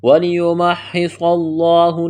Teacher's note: وَلِيُمَحِّصَ صاد کو موٹا کرنا ہے، سیٹی کی آواز پیدا کرنی ہے، لفظ اللہ کے نام سے پہلے زبر ہے، لفظ اللہ کے نام کو موٹا کرنا ہے۔